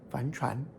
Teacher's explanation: It becomes second tone fahn, as in fahn chuan, sailboat, or fahn. First tone, depending upon where you are and which dictionary you consult.